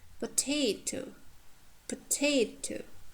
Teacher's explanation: So second syllable from the end is stressed. It has diphthong or long vowels.